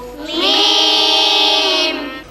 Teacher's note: দুই ঠোঁটের শুকনো জায়গা হইতে মিম।